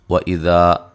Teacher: ذال کو نرم ادا کریں گے، الف مدہ ہے